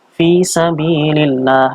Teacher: Ini dibaca tarqiq lamnya. Lamnya dibaca tarqiq atau tipis.